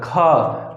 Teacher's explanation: का अगर आप बोल रहे हैं तो कंठ टच कर रहा है, खा कंठ टच कर रहा है, ठीक है। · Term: स्पृष्ट